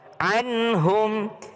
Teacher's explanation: Nun ketemu dengan ha tidak berdengung. Izhar.